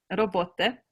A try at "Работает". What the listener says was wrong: Работает. Almost there. It's the ending. Работает.